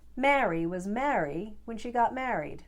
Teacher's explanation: between these three words when it comes to their vowel sounds most americans will be super lazy and just use the short a sound a for all three